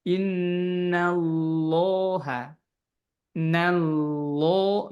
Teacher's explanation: kalau ini innal ini seperti innal masih tipis ya. Baru lafaz lamnya lafaz Allah itu baru ditebalkan.